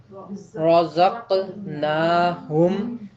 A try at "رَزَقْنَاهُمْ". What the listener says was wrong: نہیں ہے، یہ رزقناہم، رزقناہم، نا جو ہے پوری آواز محسوس ہونی چاہیے ادائیگی کے وقت۔ ٹھیک ہے، آگے۔